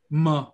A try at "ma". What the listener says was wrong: Bravo.